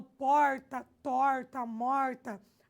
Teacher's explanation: esse R retroflexo é um aspecto fonético que influencia, que demarca a variação da nossa língua